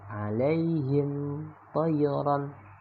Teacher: cara membacanya adalah jelas berbunyi M tanpa dengung tanpa juga dipantulkan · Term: izhar syafawi